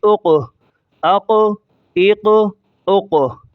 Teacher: حمزہ قاف زبر اق، حمزہ قاف زیر اق، حمزہ قاف پیش اق، اق، اق، اق۔ قاف کو موٹا کریں گے کیونکہ یہ قطب جد یعنی قلقلہ کے لفظوں میں سے ایک لفظ ہے۔ یہ قاف پر جزم ہے، یہ جزم والا لفظ اپنے پہلے لفظ کے ساتھ ایک ہی مرتبہ پڑھا جا رہا ہے، زبر کے ساتھ بھی، زیر کے ساتھ بھی اور پیش کے ساتھ بھی۔